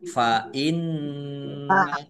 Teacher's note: nun tasdid dibaca gunah atau mendengung ya ditahan